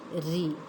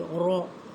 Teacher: When there is kasra and a ra, this will be light, re, and there when there was fatha, it was heavy, ra.